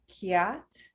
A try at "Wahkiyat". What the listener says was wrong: But you have to make the Y with an emphasis. Wahkiyat, wahkiyat. Hkiyat, double vowel on the Y. No, a double, like an emphasis. You read the Y twice, okay?